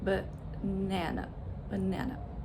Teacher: The first syllable and the third syllable are unstressed and they have the schwa sound. B, and it's it's so quick.